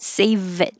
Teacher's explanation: the v connects to the eye